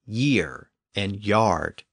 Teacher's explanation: the hard G sound shifted forward to a y sound before the front vowels in Old English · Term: initial Y sound